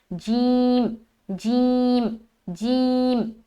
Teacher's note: تھوڑی سخت طریقے سے ہوگا، اور جیم کا مخرج کیا ہے؟ زبان کا بیچ اور اس کے مقابل جو اوپر کا تالو ہوتا ہے وہ ہے اس کا مخرج